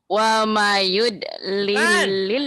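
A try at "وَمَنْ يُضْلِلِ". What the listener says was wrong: Wa mayud. Ada tasydidnya di situ. Wa mayyud lilil. Wa mayyud lilil. Wa mayyud lilil.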